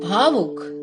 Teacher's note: भौ वर्ण के औ स्वर की संधि उक शब्द के ऊ स्वर से हो रही है और उच्चारण आएगा आव, जैसे भौ जमा उक भावुक।